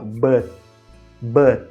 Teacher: A gente fecha a língua no céu da boca, só encosta e não solta.